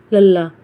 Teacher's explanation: ਜਿਹੜੀ ਜੀਵ ਹੈ ਸਾਡੀ ਦੰਦਾਂ ਦੇ ਅੰਦਰਲੇ ਪਾਸੇ ਨੂੰ ਛੂਦੀ ਹੈ